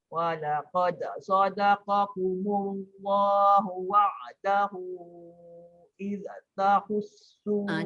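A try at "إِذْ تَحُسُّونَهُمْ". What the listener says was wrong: Jaga zal. Id tahus. Jangan id tahussu.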